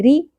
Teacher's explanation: را پر نہیں پڑھیں گے، باریک ہوگا کیونکہ اس کے نیچے زیر ہے